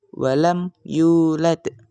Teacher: hukum bacaannya itu adalah idhar syafawi artinya jelas di bibir.